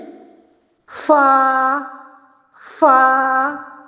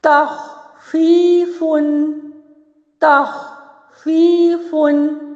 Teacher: ثنایا علیہ کا جو کنارہ ہے نیچے والے ہونٹ کے شکم سے لگ رہا ہے، تو یہ ہے فا کا مخرج